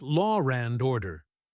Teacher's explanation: some speakers, especially in certain accents, insert an R to link them. Law and order might sound like law and order. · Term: intrusive R